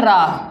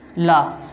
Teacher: लुंठित व्यंजन होता है रा, और पार्श्विक व्यंजन क्या होता है? ला